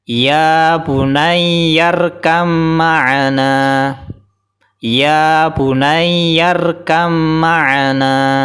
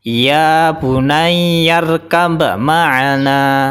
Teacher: Karena depannya ada mim maka qalqalahnya hilang. Jadi ba sukun langsung dimasukkan ke mim tanpa dipantulkan. Jadi ba-nya sudah tidak mantul lagi. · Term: tanpa qalqalah